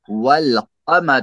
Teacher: جیسے والقمر، الف نہیں پڑھا جائے گا، یہاں لام پڑھا جائے گا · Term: لام پڑھا جاتا ہے